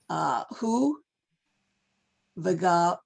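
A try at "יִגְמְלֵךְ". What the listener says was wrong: No, it's a yud. No, it's Yigamelech. Yigamelech.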